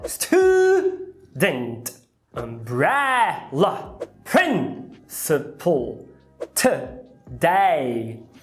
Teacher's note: Você percebe como as letras vogais que não eram as mais fortes viraram um schwa?